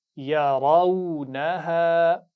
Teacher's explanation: را پر زبر ہے تو کیسے پڑھیں گے اس کو، موٹا یا باریک؟ موٹا پڑھیں گے